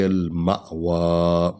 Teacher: فإن الجحیم ہی المأوى، ما کیونکہ الف پر جو ہے وہ حمزہ ہے، اس لیے اس کو جھٹکا دیں گے